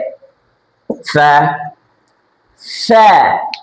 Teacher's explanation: নিচের ঠোঁটের মধ্যস্থান আর উপরের যে দুই দাঁত আছে, উপরের দুই দাঁত, মিলে একটি হরফ উচ্চারণ হয়, সেটি হচ্ছে ফা।